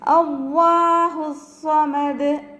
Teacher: ലാമിനെ നമ്മൾ ഉയർത്തിയിട്ടാണ് ഉച്ചരിക്കുക